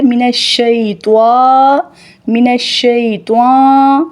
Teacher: نہ ہی ناک کے اندر آواز جائے گی، نہ ہی واؤ کی بو آئے گی